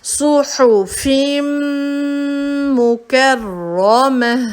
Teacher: میم ہے جس پہ شدہ ہے تو ہم ملا دیں گے آگے سے صحفم. آواز کو لمبا کر لیا صحفم مکرمہ.